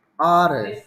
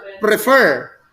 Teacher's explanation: Stress is on the first syllable. Prefer. Stress is on the second syllable or in the last syllable